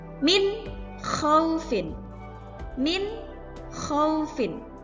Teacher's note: di sini ada nun, kemudian bertemu dengan huruf kha, maka nunnya dibaca dengan jelas.